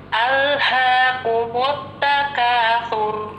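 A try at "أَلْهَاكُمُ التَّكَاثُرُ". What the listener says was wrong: Alhaaku, ku-nya tipiskan. Alhaaku, ku.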